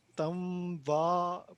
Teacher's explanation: نون کی آواز نون کی ناک سے نکلنی چاہیے ٹھیک ہے اگر آپ ناک سے آواز نکالیں گے تو پھر